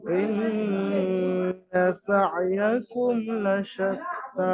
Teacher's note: মিম সাকিনকে বিনা গুন্নায় জাহির করে পড়তে হবে। ইন্না সা'য়াকুম লাশাত্তা, সা'য়াকুম গুন্না হবে না, কারণ এর পরে মিম সাকিনের পরে বা আসেনি বা মিম আসেনি যে গুন্না হবে। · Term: ইজহারে শাফাবি